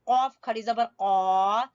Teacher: قاف زبان کی جڑ سے